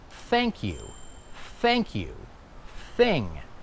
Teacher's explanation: On the other hand, unvoiced or soft would be like thank you or the word thing. So here I'm sticking out my tongue, I'm blowing, but I'm not doing any vibration.